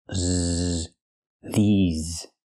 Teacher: the S makes the ZZ sound like in zebra with vibration